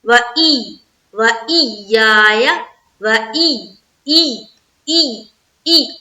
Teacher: جب یا کے اوپر تشدید آئے نا تو وہاں پر سختی بنتی ہے نا، سخت آواز تھوڑی نکالی جاتی ہے